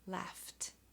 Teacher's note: Laugh ends in a gh, but the sound is FFF, and FFF is voiceless.